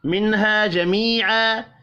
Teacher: الف یا اور پھر الف، تینوں مدہ 1 1 الف کے برابر کھینچ کر پڑھے جائیں گے، اور یہاں پر اظہار حلقی ہوگا، غنہ نہیں ہوگا۔